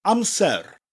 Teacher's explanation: Hear that little R, rolling R at the end?